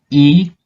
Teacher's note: itu pengucapannya tinggi dan ada di depan. I, dapat dirasakan ya, itu dia ada di depan, dan dia itu pengucapannya tinggi.